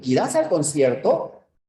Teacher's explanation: hay una elevación de voz no es la anticadencia sube es el tonema ascendente